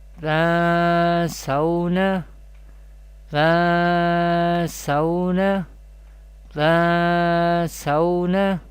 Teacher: Gunna means taking the sound into nose, and the duration of gunna is should be one alif.